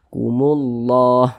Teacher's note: Tapi di sini yang kita temui lafaz Allah sebelumnya tanda baca dhammah. Maka lafaz Allah dibaca tebal sehingga dibaca kumullah.